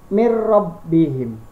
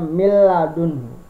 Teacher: Kalau di atas bi ghunna, bi itu dengan, kalau bila itu artinya tanpa, berarti bila ghunna adalah tanpa dengung. Jadi memasukkan bunyi nun mati atau tanwin ke dalam huruf idgham tanpa dengung apabila bertemu dengan huruf lam dan ro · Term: idgham bila ghunna